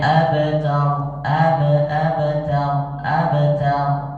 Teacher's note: Jadi bukan fathah sebenarnya Tapi antara fathah dan sukun pertengahan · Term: Kubro